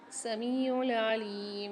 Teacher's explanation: میم کے ساتھ یا ساکن ایک الف مقدار کھینچیں گے، لام کے ساتھ بھی یا ساکن ایک الف مقدار کھینچیں گے۔